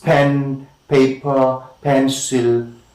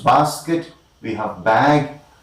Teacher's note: the active articulator and the passive articulator are lower lip and upper lip, and the closing stage is between the lower lip and the upper lip. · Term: bilabial plosives